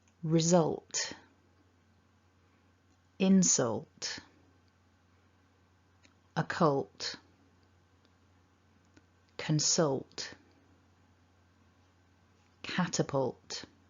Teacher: The tongue is just up behind the top teeth. And as we make the t, we just release a little puff of air from the mouth. So gliding from the all to the t sounds like this. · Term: alt cluster